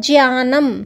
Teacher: सही उच्चारण इसका क्या होता है ज्ञानम क्योंकि ज मिला हुआ जैसे त्र बोलते त और र का उच्चारण आता है वैसे प्रकार इसमें भी ज और य का उच्चारण आना चाहिए